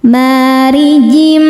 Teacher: Huruf ro dibaca tarkik sebab harokatnya kasrah. Cara bacanya ditipiskan.